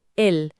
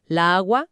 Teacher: Pero en singular usamos el artículo masculino el para evitar la cacofonía, el choque de las dos as tónicas juntas. La agua suena mal.